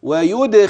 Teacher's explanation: رقيقه بل هي مفخمه على الحقيقه انتبه ويد اذا الدال تقلقل الخاء مفخمه في ادنى مراتب التفخيم